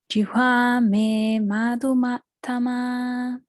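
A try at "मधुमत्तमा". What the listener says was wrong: Still long. Make sure you get short. Madhumattama.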